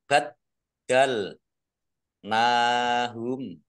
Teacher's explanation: Dalnya dibaca double, ada tasdidnya.